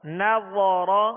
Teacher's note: را پر زبر ہے اس لیے را کو پر پڑھیں گے